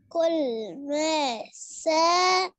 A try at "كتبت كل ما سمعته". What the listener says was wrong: س غلط، قلنا مسيك الحروف في بعضها. سامع سمعت سمعته كتبت كل ما سمعته.